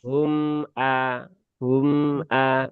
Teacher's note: yang punya sifat tawasud itu bukan hamzahnya tapi mimnya